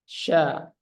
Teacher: istifal biasa saja lidahnya tidak naik